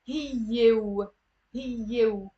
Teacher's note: because there's a vowel sound, immediately you do the link and you do like a w sound, not a u sound.